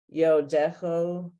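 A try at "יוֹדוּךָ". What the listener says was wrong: No, look again. No, Jucha. You have something against the oo sound. You have something against the oo sound. Yo Ducha. See, I'm telling you, something against that oo sound. hard because half of it you never do unless you're the leader.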